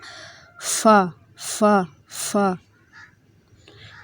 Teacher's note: نیچے والا جو ہونٹ ہے اوپر والے دانتوں سے، سامنے والے جو دو دانت ہیں ان سے ٹچ کریں گے تو فا ادا ہوگا